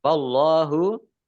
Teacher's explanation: Allahnya dibaca tebal karena harokat di depannya fathah.